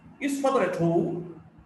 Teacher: The stress is on home. The tone is on home. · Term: Rising tone